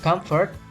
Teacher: a labiodental nasal in comfort is conditioned by following f sound. This show the similitude is with the or depend on the f sound.